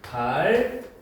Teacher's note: 한자어에서 리을 받침 뒤에 결합되는 드스즈는 된소리가 된대요